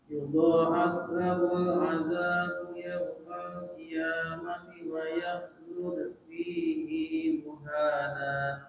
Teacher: Jadi hi-nya di sini dibaca panjang 2 harokat.